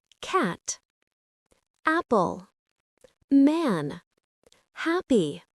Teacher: In American English, it's a very open front sound. Your mouth opens quite wide. Your tongue is low and forward. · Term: short A